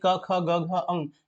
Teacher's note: कवर्ग यानी क ख ग घ अंग, ये होता है कंठ से